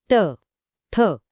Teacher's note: ट, ठ, ड, ढ हे मूर्धन्य आहेत. यासाठी जीभ उलटी करून टाळूच्या पुढच्या कठीण भागाला लावावी लागते.